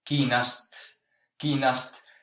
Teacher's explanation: In the spoken language you can hear the A dropping out.